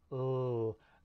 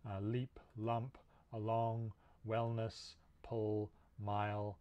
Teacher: The technical term here is lateral, and that's because for this sound and some others like it, we'll see another in a second, the air is actually going around the sides of the tongue instead of over the middle while you say it. So if you go, ugh, the center of the tongue is touching the top of the mouth at the alveolar ridge, and the sides are open and you can feel air going around them.